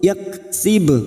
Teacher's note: qalqalah sugroh yang mati asli di tengah kalimat, jangan lupa dipantulkan